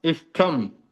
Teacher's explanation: इस प्लस तम, तो यहाँ पर जो है मूर्धन्य श के सामने त वर्ग आया, उसका भी ट बन जाएगा, तो यह इष्टम बन जाएगा।